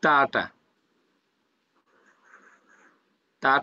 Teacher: জিহবার আগা সামনের উপরে দুই দাঁতের গোড়ার সাথে লাগিয়ে উচ্চারিত হয়